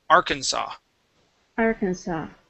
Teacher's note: Okay, so the S at the end is not pronounced.